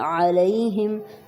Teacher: علیہم لی کو بالکل نہیں کھینچنا